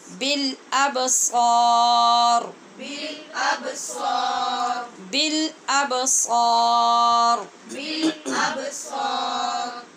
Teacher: را کو بھی پر کریں گے اور سوا نہیں پڑھیں